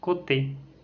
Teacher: La voyelle suivante est O. C'est une voyelle postérieure mi-fermée, arrondie et orale. On le retrouve par exemple dans le mot côté.